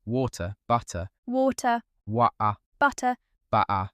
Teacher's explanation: It becomes a glottal stop, a little catch in the throat where the T should be